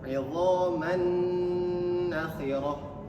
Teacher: tanwinnya ini seakan-akan tidak ada tanwin, langsung dimasukkan ke huruf nun. Gunnah artinya tahan dulu atau dengungkan dulu.